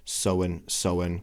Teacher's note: And so is pronounced like this with the diphthong o, soen. And he's reducing the in to un, soen, because it's not an important syllable.